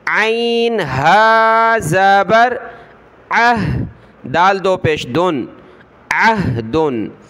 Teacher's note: والی ہا ہے، تو عین کو ہا کے ساتھ ملائیں گے، عین کی آواز آئے پھر فوراً ہا کی آواز